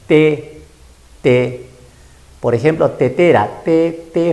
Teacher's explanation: fíjate la lengua y el diente sonido dental